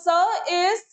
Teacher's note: स की, मतलब हमें स की जो है थ्री टर्म डिस्क्रिप्शन देनी है. तो स is voiceless alveolar fricative